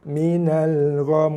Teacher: Bila kita wakaf kat sini, bila kita berhenti, mim, kita tak baca lagi mim, kita wakafkan dia, so mim jadi baris mati. Okey, dengung tetap dikekalkan bacaan dengung minimal 2 harakat. So dia akan menghasilkan bunyi minal gham.